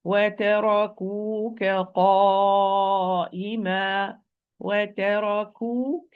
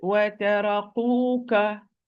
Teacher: kaf, it is also the farthermost part of the tongue, but with the area in between, hard and soft palate.